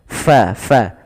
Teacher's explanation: fa alirkan nafasnya, fa, jangan dibaca pa